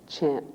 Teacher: Chen as the eh sound, chen, and the n is harder, it's explosive